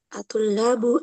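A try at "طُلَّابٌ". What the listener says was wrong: Atullabun tanwin kan?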